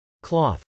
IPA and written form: klˈɔːθ (cloth)